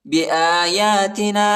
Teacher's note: الف کے اوپر جو ہے چھوٹا مد آیا ہے، اس کو تقریباً 2-3 سیکنڈ تک کھینچنا ہے